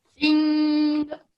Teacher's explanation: Now, if you notice, your tongue isn't touching the roof of your mouth, right? It's just below it when you say sing. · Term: light nasal sound